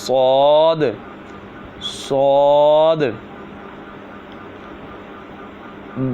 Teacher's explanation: زبان کی نوک اور دونوں دانتوں کے اندرونی کنارے سے صاد ادا ہوتا ہے. جس طرح زا اور سین ادا ہوتے تھے یہ بھی اسی طرح ادا ہوتا ہے.